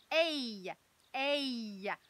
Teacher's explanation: Ça, ça s'appelle une diphtongue. C'est-à-dire qu'il y a deux sons pour faire notre « a ». Ça fait bien « ay », comme dans « abeille ».